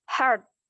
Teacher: bunyi T pada posisi akhir kata yang dieja hard, HARD, adalah hasil netralisasi